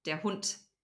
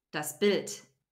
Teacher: So we don't say der Hund, we say der Hund. The D becomes a T because the D is at the end of the word.